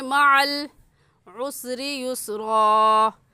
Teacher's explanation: معل میں عین نکال کر پڑھیں گے اور عین حلق کے درمیانی حصے سے نکلتا ہے